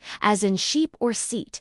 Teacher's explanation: As in sheep or seat, your lips are pulled back a little, almost smiling, and the tongue is higher and pushed forward. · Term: long e sound